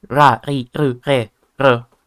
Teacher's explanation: there isn't really an R sound either. It's more of a flap, like ra, ri, ru, re, ru.